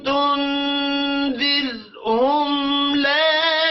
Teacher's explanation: میم ساکن ہے آگے لام آ رہا ہے اظہار شفی ہوگا غنہ نہیں کرنا